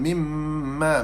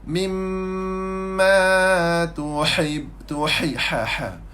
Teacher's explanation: mim syaddah wajib al-gunnah. Hukum dia wajib al-gunnah. Sifat dia adalah gunnah.